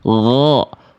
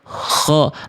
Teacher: Nah, yang membedakan huruf ghain dan kha hanya satu sifat, yaitu di poin satunya. Nih, kalau huruf ghain sifatnya adalah jahr, tertahan nafasnya. Sedangkan huruf kha sifatnya adalah hams, mengalir nafas. · huruf ghain dan kha ternyata makhrajnya sama dari ujung tenggorokan bagian terluar